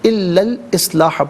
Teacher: درمیان میں سے الف یعنی حمزہ کو حذف کیا جائے گا